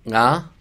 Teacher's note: が is pronounced with like a little bit of a nasal sound at the beginning